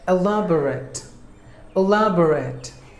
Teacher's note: elaborate elaborate it's an adjective a lab or act elaborate elaborate there are four syllables in this word and we have to stress the second syllable lab should be given more volume than the rest of the syllables